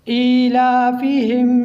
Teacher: اس کو ہم کھڑی زبر کو ایک الف کے برابر لمبا کر کے پڑھیں گے اور کھڑی زیر کو بھی ایک الف کے برابر لمبا کر کے پڑھیں گے۔